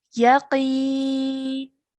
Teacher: qaf is a sound that we need to make a thick and heavy sound for